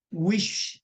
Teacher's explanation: 목 울리지 않고 속삭이듯 그렇게 입술을 오므리고 소리를 길게 내주는데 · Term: 쉬 발음